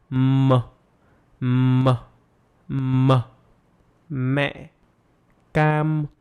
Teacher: Block the airflow with the lips and direct it through the nose. Close your mouth by bringing your lips together. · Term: M sound